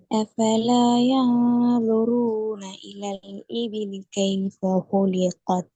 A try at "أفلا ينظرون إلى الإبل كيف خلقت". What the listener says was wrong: இது லாட சவுண்ட் சரி. இபிலி பாபா இபிலி okay. இபிலி பி என்ன கொஞ்சம் கஸ்ராவுடைய உச்சரிப்பை வெளிப்படுத்தி வருங்க. இபிலி இபிலி.